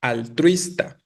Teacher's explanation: Su sílaba tónica, como ya lo están diciendo, es la penúltima y por lo tanto es grave, ¿no? Es grave terminada en vocal, por eso altruista no se acentúa aquí.